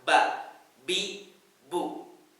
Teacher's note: B bab dari dua bibir yang bertemu dengan kuat